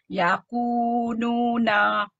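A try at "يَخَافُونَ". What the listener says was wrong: Yang ni kho. Lepas tu yang ni fu, huruf fa. Fu na, okey. Ya khofu na, macam tu.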